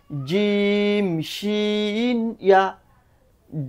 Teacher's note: জিম জিহ্বার মাঝখান উপরের তালুর সাথে রাখবে